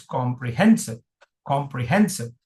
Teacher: There is a secondary stress on com. Primary stress is on hen. So it's comprehensive.